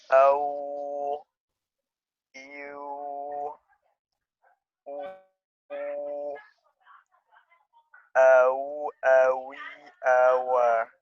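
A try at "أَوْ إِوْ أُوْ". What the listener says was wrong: Kurang tipis. Awi, awa.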